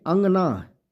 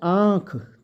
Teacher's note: जब हम कहेंगे अंगना तो नाक से स्वर आएगा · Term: अनुनासिक स्वर